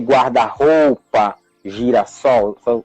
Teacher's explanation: So these compound words, they have the stressed syllable on the second word.